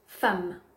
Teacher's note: femme s'écrit avec un e mais se prononce comme un a